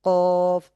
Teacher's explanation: জিহ্বার গোড়া তার বরাবর উপরে তালুর সঙ্গে লাগাইয়া উচ্চারিত হয়। কফ, জিহ্বার গোড়া তার বরাবর উপরে, জিহ্বার গোড়াটা হচ্ছে হ্যাঁ, একটু ভিতর দিকে, হ্যাঁ, জিহ্বা থেকে একটু ভিতর দিকে, এটা তার বরাবর তালের সঙ্গে লাগে।